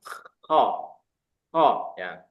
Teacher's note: Kho dan ghin ini dua-duanya huruf isti'la. Tebal dia. Jadi naik pas ke atas. Suaranya naik.